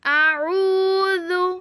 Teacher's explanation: قل اعوذ، واو ساکن ہے اور واو سے پیچھے پیش ہے، اس لیے بن گیا واو مدہ، اور واو مدہ کو ہم ایک الف کے برابر لمبا کرتے ہیں۔ اعوذ، زال پہ ہم زبان باہر نکالیں گے کیونکہ زال نرم حروف ہے